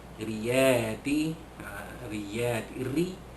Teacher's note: ra baris bawah dibaca nipis, yakni tarqiq